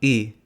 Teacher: the close central unrounded vowel, otherwise known as the haha funny Slavic E sound